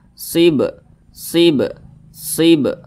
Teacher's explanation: apabila dia sukun atau karena disukunkan karena sebab berwakaf misalnya nah maka cara bacanya itu di pantulkan · berarti huruf ba Ini dipantulkan SIB SIB sibah mantul seperti itu Dan Dia tergolong kepada Qalqalah Sugra atau Qalqalah kecil karena dia di tengah kalimat jadi pantulannya itu kecil saja